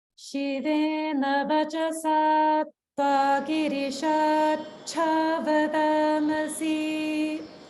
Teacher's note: notice the holding after dirgha in vachasatva, vachasatva, and then again with girishat cha, girishat cha